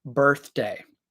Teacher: the first th sound is quiet that's what we call the unvoiced th sound